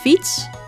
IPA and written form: fits (Fiets)